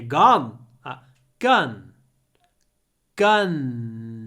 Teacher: think you know this word my uncle has got a gun in the word gun the longest sound is the n you're gun gun gun you need to hold the N at